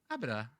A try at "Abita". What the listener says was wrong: Abita. Abita. Abita, not Abida.